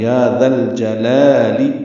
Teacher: لام ساکن پہ اظہار ہے، جیم کو جلدی پڑھنا ہے ، لا الف مدہ ہے، لی لام کے نیچے زیر ہے،